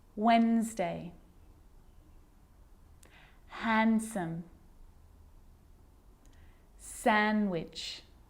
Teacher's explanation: I'm not pronouncing the D in Sandwich I'm just pronouncing the consonant n sound before it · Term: silent